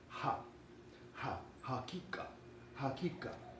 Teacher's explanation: And this letter, as we can recall, is the H where you just push air out of your mouth without vibrating your vocal cords, and followed by a short ah